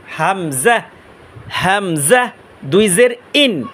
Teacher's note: গলা শুরু হইতে হামজা উচ্চারণ করব